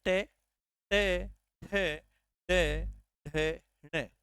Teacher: जब आप ट ठ डे ढ ण बोलते हैं तो इनका जो स्पर्श होता है वो होता है मुर्धा के पास